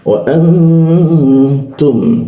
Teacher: nun bertemu tak. Kita dengungkan, ditahan dua ketukan